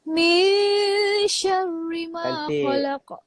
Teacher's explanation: Ikhfa tu maksudnya kita kena sembunyikan nun ni di belakang shin. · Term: Ikhfa hakiki